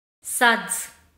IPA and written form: sʌdz (Suds)